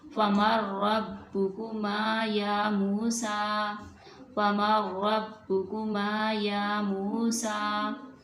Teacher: नून साकिन है जो, उसको रा के अंदर मुदगम कर देंगे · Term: इदगाम मुतकारिबैन